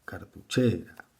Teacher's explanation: la sílaba tónica ubicada en la penúltima por lo tanto es una palabra grave